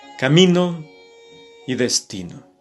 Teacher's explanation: Son dos palabras graves, se acentúan en la penúltima sílaba. Por lo tanto, la acentuación viene a partir de la vocal I.